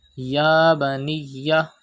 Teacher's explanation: Stretch khara zabar on Ya.